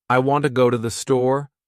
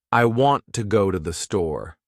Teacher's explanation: The words want, go, and store are stressed. The other words I, to, and the are much faster and softer. That's the natural rhythm of English. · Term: stresstimed language, stress-timed language